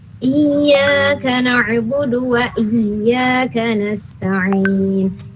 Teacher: Iyyaka mad tabi'i 2 harokat